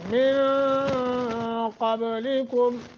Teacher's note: قاف حروف اخفا میں سے ہے، قاف کو موٹا، با پہ قلقلہ کریں